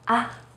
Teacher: try to say it as in the first tone, except that you say it in a more light and short way, like, ah. It's not only important, but crucial to master different tones in Chinese. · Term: neutral tone